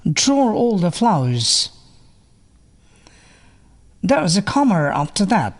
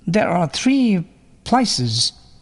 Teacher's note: ও এবং পরবর্তী ভাওয়াল সাউন্ডের মধ্যে একটি বাড়তি র সাউন্ড এর উচ্চারণ শোনা যায়। এটিকেই লিঙ্কিং র অর ইন্ট্রুডিং র বলা হয়।